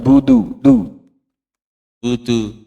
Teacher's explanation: huruf Dal jangan lupa tidak banyak udara yang keluar